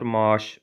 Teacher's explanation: Maaş sözündə A-nın biri düşür və sözün tələffüzü olur maaş formasında. 4 dənə hərf var, 3 dənə səs var.